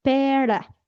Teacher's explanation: Entonces, esa es la rótica vibrante y la R es la rótica percusiva, es decir, rueda la lengua, pero es un sonido suave, percusivo.